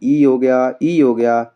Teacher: इ स्वर का उच्चारण स्थान तालु ही हो जाएगा।